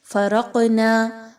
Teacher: قاف حروف قلقلہ میں سے ہے، یہاں پر قاف کو ہلا کر پڑھا جائے گا۔